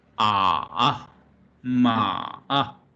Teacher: as the tone mark it suggests, it goes down first and come up again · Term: third tone